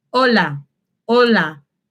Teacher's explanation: la H en español no se pronuncia